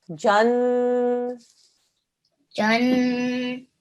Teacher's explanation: The noon is a mashaddad letter here, so therefore 2-second nasal sound.